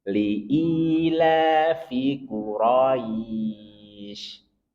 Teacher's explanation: ingat fin-nya jangan dipanjangkan